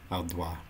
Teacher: I think in French you don't have to pronounce that last part so it comes out alwa